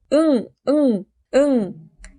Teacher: 혓바닥 뒤쪽이 연구개에 닿아서 소리 납니다. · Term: 비음